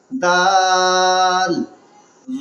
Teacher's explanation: دال، جس جگہ سے آپ نے تا نکالا تھا زبان کے نوک اور اوپر کے دانت کے اگلے حصے کے جڑ سے